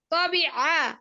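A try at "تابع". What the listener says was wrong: তো না আপু, ওটা তা, তা, তা, তা।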